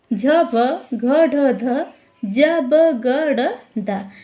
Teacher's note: हस प्रत्याहार के अंतर्गत वर्णों का संवार, नाद और घोष होगा।